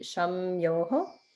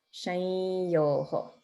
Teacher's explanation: And so it looks like it should be sham yo. It's more like a nasalization of the ya that follows.